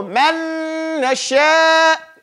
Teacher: So since they've become, like you don't say man, you say man and you hold it. So you have gunna in it, but you don't wait. You go man nasha.